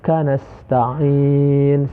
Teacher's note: ain itu ketika membaca kita harus ada penekanan ya, penekanan di pangkal lidah kita. Kanasta'in, sehingga ainnya dapat terbaca dengan jelas.